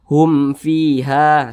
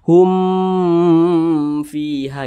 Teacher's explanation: karena dia izhar maka tidak dibaca berdengung jadi Hum di sini dibaca tidak berdengung dibaca jelas dibaca pendek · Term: izhar syafawi